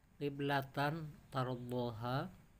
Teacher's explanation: Kiblatan fathatain bertemu ta, hukumnya ikhfa.